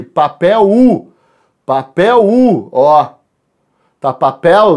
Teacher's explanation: a palavra papel foneticamente apresenta um ditongo decrescente